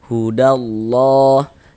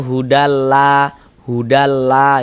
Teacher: sebelum lafaz Allah sebelah sininya nih sebelah sininya nih ada ini nih ada harakat fathah baris miring di atas ini namanya harakat fathah atau tanda baca fathah atau baris fathah maka lafaz Allah huruf lam jalalahnya itu dibaca tebal dibaca tafkhim